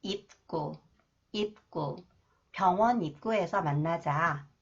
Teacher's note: When 기역 follows the final consonant 비읍, that is pronounced 브 sound. 기역 is pronounced 쌍기역. 끄 sound. 입구.